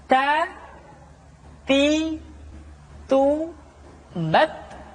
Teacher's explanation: huruf Ta ketika diucapkan terdengar ada nafas yang mengalir, atau dalam ilmu tajwid disebut dengan sifat al-hamas.